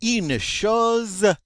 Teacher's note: That intervocalic S between two vowels is going to be pronounced like a Z.